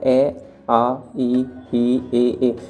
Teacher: जिन स्वरों के उच्चारण में होठ, व्रत, मुख या गोलाकार नहीं होते, यानी कि आप जिन्हें बोलेंगे तो इनमें होठों का यूज़ नहीं होता। आप बोल के देख लेना, ए आ ई ए, इनमें होठों का यूज़ नहीं होता। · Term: अवृतमुखी